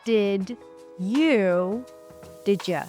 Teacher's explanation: Did you, instead of d and ya, we have j. J is considered as one phoneme, one sound in English, not two.